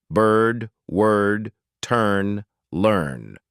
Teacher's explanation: Lips are not rounded. Lips are not spread. They're simply neutral. Tongue is in the center of the mouth. Hold the sound long.